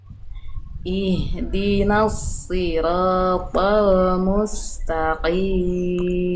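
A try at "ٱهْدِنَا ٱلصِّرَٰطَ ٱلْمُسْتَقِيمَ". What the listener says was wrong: Saya rasa Ibu Uisnya sudah bagus cuman kayaknya bisa lebih tebal. Coba Ibu ikuti saya.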